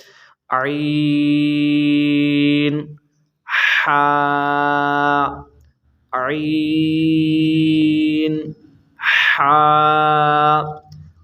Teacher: عین ح حلق کے درمیان والے حصے سے ادا ہوتے ہیں